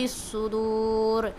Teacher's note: صدوری کے صاد اور را دونوں کو موٹی آواز سے پڑھیں گے